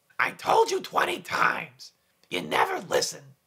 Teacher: for marge one common quality throughout her speech sounds is nasality · We definitely want nasal resonance for Marge. This is accomplished by lowering the soft palate. Imagine the sound going into the nasal cavity and feel those vibrations in the nose.